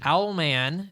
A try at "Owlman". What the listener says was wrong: It sounds like you're trying to say almond. Owlman.